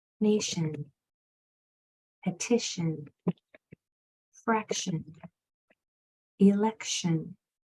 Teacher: if you'll notice that TI is saying sh in the suffix Shan that o is changing to the shwah sound and saying a